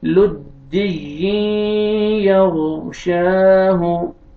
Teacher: तनवीन के बाद हुरूफ यरमलून में से या है, आपने इदगाम करना है गुन्ना के साथ